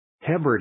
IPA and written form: 'həbrɪdiz (hebrides)